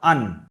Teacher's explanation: আপনার জীবের যে আগাটা আছে ওই আগাটা উপরের তালুতে টাচ হয়ে যাবে। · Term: নুন